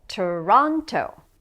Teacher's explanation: Which syllable has stress? Toronto. The second syllable, Toronto.